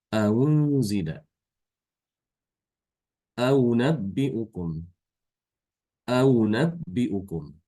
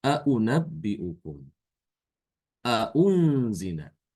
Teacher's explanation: Hamzah yang kedua yang berharokat itu, ya, itu dibaca antara hamzah dengan huruf wawu madiyah. Antara u dengan wu. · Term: tasil